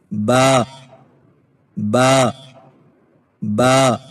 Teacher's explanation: ہونٹوں کے گیلے حصے کو سختی سے ملا کر باریک آواز میں پڑھیں